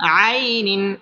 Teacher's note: জবরের বাম পাশে জুম্মা ইয়া লিনের হরফ তাড়াতাড়ি পড়তে হবে আইনিন তানভীনের বামে হামজা আসছে হামজা ইজহারের হরফ এখানে গুন্নাহ ছাড়া স্পষ্ট করে পড়তে হবে আইনিন হামজা খারা জবর আক আলিফ টেনে পড়তে হবে এটার মধ্যে